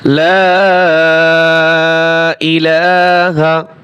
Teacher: লা এখানে তিন আলিফ টান হবে